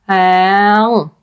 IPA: ɛ̃